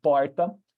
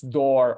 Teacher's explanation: This R sound is the same way we pronounce door, or at least that I pronounce door in English. You have a retroflex sound in which your tongue kind of goes backwards, and you have this longer sound.